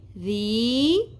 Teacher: ان ل، رال نرمی سے ادا ہوگا، زیر کے ساتھ یا ساکن آ گیا حرف مدہ، زیر کو ہم ایک الف کے برابر کھینچیں گے